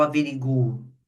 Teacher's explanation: a pessoa colocava a sílaba tônica no ri. Só que a sílaba tônica é no gu.